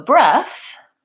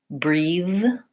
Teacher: so breath voiceless breathe voiced